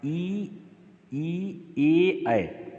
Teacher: आप जीभ के उच्चारण को करें, जीभ देखेंगे, जीभ आगे आ रही है, ई यानी आगे नीचे के दांत को हल्का हल्का स्पर्श कर रही, ए कर रही है ना, तो जीभ आगे आ रही है, लिहाजा ये अग्रस्वर है